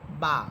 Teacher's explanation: বা এটা দুই ঠোঁট মিলিয়ে পড়বেন